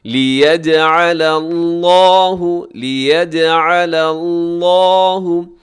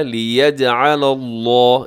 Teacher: لفظ اللہ کے لام سے پہلے لام ہے تو پہلے والا لام باریک رکھیے گا